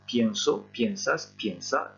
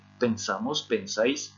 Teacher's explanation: Et comme vous pouvez le constater, il n'y a pas de diphtongue aux deux premières personnes du pluriel